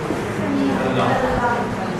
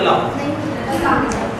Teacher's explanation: ਸਾਡੀ ਜਿਹੜੀ ਜੀਭ ਹੈ ਉਹ ਬਿਲਕੁਲ ਖੜੀ ਹੋ ਜਾਂਦੀ ਹੈ ਉੱਪਰ ਫਰੰਟ ਵਾਲਾ ਹਿੱਸਾ ਰੋਕ ਲੈਂਦੀ ਹੈ ਕਿ ਹਵਾ ਜੀਭ ਦੇ ਦੋਵਾਂ ਪਾਸਿਆਂ ਤੋਂ ਗੁਜ਼ਰਦੀ ਹੈ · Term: ਪਾਸੇਦਾਰ ਵਿਅੰਜਨ